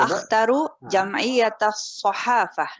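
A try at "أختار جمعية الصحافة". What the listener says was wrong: Ibu taknya dipanjangkan lagi Bu. Mud di harfi Taknya dipanjangkan akhtaru jam'iyatas sahafah.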